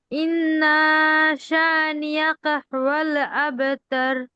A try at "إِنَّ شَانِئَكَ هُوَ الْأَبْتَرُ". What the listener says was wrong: ইন্না নুনে টান হবে না আপু। ইন্না শানিআকা হুয়াল আবতার।